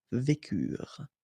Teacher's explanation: Ils vécurent, so remember, mark for the plural, and T is not pronounced phonetically, you don't get it